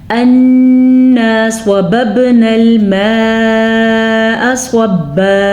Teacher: صبا میں بھی سواد کو پر پڑھیں گے